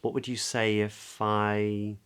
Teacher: open up to a nice I vowel, diphthong, lots of space, I. What would you say if I?